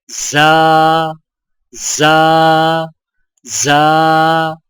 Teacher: ज़ा की आवाज सीटी वाली होती है